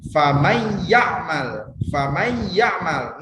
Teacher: cara membacanya harus mendengung Agak didengungkan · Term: idgham